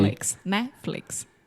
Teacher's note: we kind of have that very quick Rising intonation and then it falls down at the end